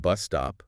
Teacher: another compound noun, stress on bus.